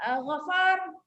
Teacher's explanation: walaupun kita berhenti ya, kita waqaf, ra itu baris dia tak boleh tengok, dia masih tafkhim ataupun masih tebal